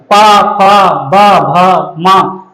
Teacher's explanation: पा, फ, ब, भ, मा, ओष्ठ, दोनों ओष्ठ हमारे जाकर के आपस में टकराते हैं, इसलिए कौन सी ध्वनियां हैं, ये ओष्ठ ध्वनियां हैं।